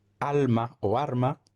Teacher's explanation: pronunciamos igual los mínimos pares alma o arma se pronunciará generalmente como arma · en dominicana la ere y la l se intercambian o se neutralizan